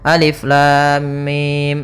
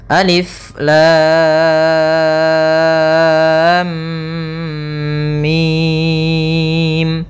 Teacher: Cara membacanya adalah kita panjangkan dulu lamnya, baru dimasukkan ke mimnya. Jangan lam langsung masuk mim, misalnya alif lam mim. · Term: mad lazim harfi musaqqal